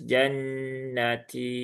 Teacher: Jannati nunnya bertasydid maka tahan dulu tiga harakat. Setelah itu baru ee ke huruf ta yang ber ee ta yang panjang dua harakat.